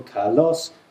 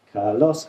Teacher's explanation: Their voice went up on the second part of that word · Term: pitch accents